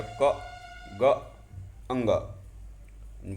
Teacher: इसमें कम हवा बाहर निकलती है मुख से, कम हवा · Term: अल्प प्राण